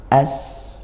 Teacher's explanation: Makhrajnya dari ujung lidah sebagaimana huruf sin. Ujung lidah dua gigi dirapatkan, yang atas dan bawah